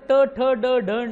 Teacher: जिभेचं टोक बरोबर टाळूच्या मध्ये आपटतं